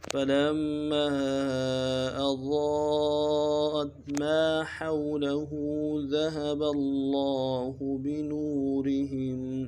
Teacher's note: مد عارضی ہے، دائل الف دار میں کھینچیں گے، فلما اضاءت حمزہ کو واضح نرمی سے ادا کریں گے، ضاد کو موٹا ادا کریں گے ، ضاد کے بعد الف مدہ ہے، مد کے اوپر الف